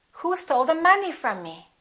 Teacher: from is a preposition so we don't stress it it's not a content word it's a function word and me is a pronoun from me so both of those